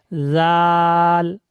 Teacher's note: জিভের আগা এবং উপরে দাঁতের আগা একসঙ্গে করে মিলিয়ে বলবে জাল। জাল, হালকা করে, জাল, জিভের আগা উপরে দাঁতের আগা একসঙ্গে মিলবে, জাল।